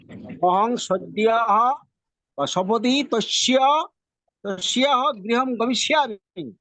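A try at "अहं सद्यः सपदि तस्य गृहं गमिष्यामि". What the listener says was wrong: হ্যাঁ ঠিক আছে, কিন্তু এখানে স এর উচ্চারণটা আপনি তালব্য স এর মতো করেছেন। এটা আছে দন্ত স, আর আমরা জানি সংস্কৃততে দন্ত স এর উচ্চারণ হবে স।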